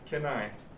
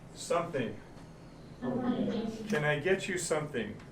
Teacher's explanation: when can is at the beginning of a sentence and we get a little bit sloppy in our speaking it sounds like ken